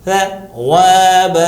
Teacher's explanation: دانت کی نوک پر زبان کی نوک کو رکھ کے ہلکا سا بولیے گا، پتلا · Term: حرف سا